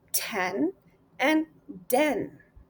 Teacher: The t sound is voiceless alveolar stop. The tongue touches the ridge just behind the top of your teeth. Then you release the air without using your voice.